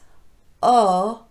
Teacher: this one starts with the tongue in an uh position as in the word cup but the lips are rounded just like the letter O itself so it's o and then it transitions into that tightly rounded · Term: long o